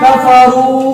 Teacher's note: واو مدہ کو کم سے کم ایک الف کے برابر کھینچ کر پڑھنا ہے